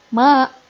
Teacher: ini mad tabi'i. Cukup 2 harokat di ayun saja.